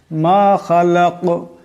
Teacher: মা খালাক এখানে দম সারলে এই কাফ কলকলা হরফ, আওয়াজটিতে এটি টক্কর খাবে।